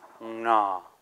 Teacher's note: It's long and low and nasal